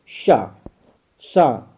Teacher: इसका सही नाम तालव्य सा है, क्योंकि इसका उच्चारण होता है तालु से